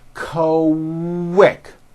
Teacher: the word quick is pronounced with a K and a strong W sound. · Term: Q sound